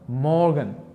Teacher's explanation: bu so'zda men R harfini deyarli talaffuz qilmayapman yoki yumshoqroq talaffuz qilyapman.